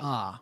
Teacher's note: we say ah look at what happens our mouth opens up but also our tongue comes down and so our mouth becomes shaped sort of like a funnel